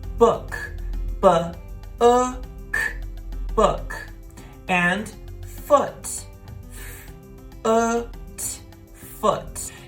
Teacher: It's quicker and softer. For the short sound, your lips are less rounded.